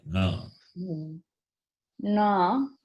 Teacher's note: Na is guttural plus nasal.